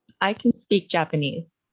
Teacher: I definitely heard you stress speak and the vowel in can being shorter.